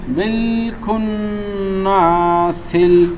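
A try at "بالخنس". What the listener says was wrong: খুন না টান হবে না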